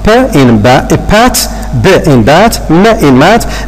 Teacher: They are formed by the narrowing of the vocal tract by the lips. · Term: bilabial consonants